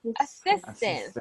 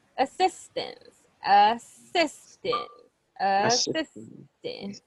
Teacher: gave gave okay and this word assistance so we say assistance the stress is in the second syllable